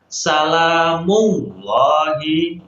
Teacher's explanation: Ya, lamnya dibaca tebal, lam tafkhim.